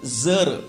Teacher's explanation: जरचा उच्चार करत असताना आपल्या जिभेचं टोक जे आहे ते वरच्या दातांच्या टोकांना त्याचा स्पर्श होतो. म्हणजे हे दंतमूलीय शब्द असं म्हणायचं याला.